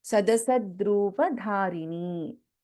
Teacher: Dha is mahaprana in dharini